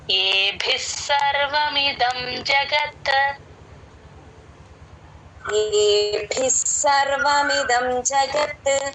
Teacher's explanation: ఏ అచ్చు కాబట్టి కంఠంలో నుంచి రావాలి ఏబిస్ భి కి మహాప్రాణం ఉంది భి కి స ని జాయిన్ చేసి చెప్పాలి